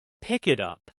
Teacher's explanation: Don't make three separate stops. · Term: connected speech